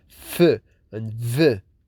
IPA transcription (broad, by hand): f,v